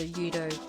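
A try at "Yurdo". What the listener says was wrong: I appreciate that does not pronounce the R in my name, apparently. She's just like, Yudo. It's like, there's an R there. I know there's an R sound. It's like, no, Yudo.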